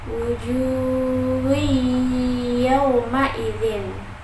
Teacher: Lalu yang kedua ada idgham bihunah karena ada huruf ha berharokat dhammah yang bertemu dengan berharokat dhammah tanwin yang bertemu dengan huruf ya bertasydid. Dibacanya dengan mendengung dan ditahan sampai 3 harokat.